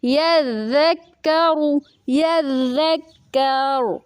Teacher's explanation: را ساکن وقف کی صورت میں جب ساکن کیا جاتا ہے تو اس سے پہلے کاف کے اوپر زبر ہے، تو اس لیے را کو وصل اور وقف دونوں صورتوں میں پر پڑھا جائے گا